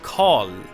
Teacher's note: So the tongue, the tip of your tongue, flexes back and you get one sound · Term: retroflex consonant